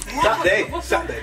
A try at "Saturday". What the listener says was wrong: It's Saturday. There's a UR in there. It needs to be pronounced.